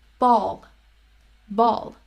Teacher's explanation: you will not get the benefit of that extra symbol so you have to know that the ending l has a little extra uh before it · So a light L comes at the beginning of a word or syllable, and a dark L comes at the end of a word or syllable. Now the dark L will have kind of a hidden vowel before it.